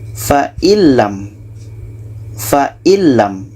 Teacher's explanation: Nun masuk ke lam dan tidak ada dengung. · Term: idgham bila gunnah